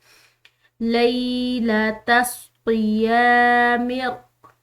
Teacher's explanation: हम इस लाम को एक अलिफ की मिकदार खींच कर अदा करेंगे